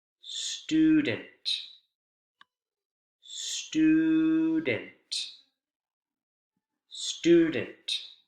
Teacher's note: The vowel sound is often higher in pitch. The intonation rises in the stressed syllable, and then that vowel sound in the stressed syllable is going to sound a lot longer. · You can hear that U vowel sound much clearly, much louder, and much longer than the unstressed E vowel sound.